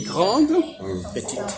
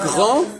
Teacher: Quand je dis grande, petite, on entend le D. Et quand je dis grand, on n'entend pas le D.